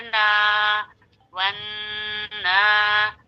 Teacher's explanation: الف سے پہلے زبر ہے، ایک الف کے برابر کھینچیں، کیوں؟ الف مدہ ہے، الف سے پہلے زبر آتا ہے تو الف مدہ کہلاتا ہے، اسے ایک الف کے برابر کھینچ کر پڑھتے ہیں.